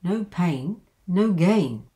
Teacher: it comes up for the comma because there's something to follow and then comes down at the end